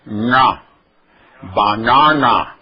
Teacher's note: Este pontinho aqui nos informa que este N é pronunciado com a língua lá para trás, no palato